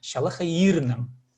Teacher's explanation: Поэтому шалахай ирнан. И надо вытянуть и ударение поставить на и